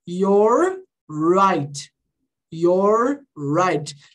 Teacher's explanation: nas duas palavras, o R tem esse som de er. Esse R mais retroflexo.